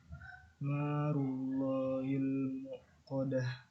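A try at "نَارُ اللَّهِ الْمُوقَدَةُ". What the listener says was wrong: Narullahi. Wawu ya, bukan hamzah, bukan muqadah tapi pakai wawu. Al muqadah gitu ya.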